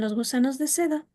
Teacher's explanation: empieza de un tono bajo, se mantiene y luego vuelve a subir